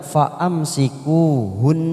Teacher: ujungnya kita tekan selama 3 ketuk karena ada huruf nun yang bertasdid